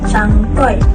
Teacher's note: Suku kata bagi perkataan cangkol ialah suku kata tertutup kerana diakhiri dengan konsonan lateral alveolar bersuara l, manakala perkataan cangkoy ialah suku kata terbuka kerana diakhiri dengan vokal hadapan sempit hampar i